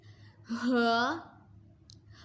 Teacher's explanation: ہا حلق کے نیچے والے حصے سے ادا ہوگا۔